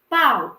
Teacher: eu tenho o A, que é o quê? Uma vogal. E eu tenho o U, que é uma semivogal. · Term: ditongo decrescente